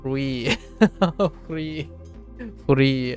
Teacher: there's a touch of the R but it's really subtle